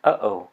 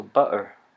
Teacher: And finally, the glottal stop. This sound is made through a closure in the glottis.